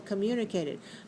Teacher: five syllables stress the second syllable